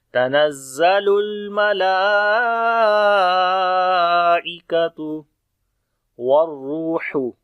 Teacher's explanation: واو کو را کے ساتھ ملائیں گے، اور را کو موٹا پڑھیں گے اور واو مدہ ہے لمبا بھی کریں گے . ہا کو گلے کے درمیان والے حصے سے پڑھیں گے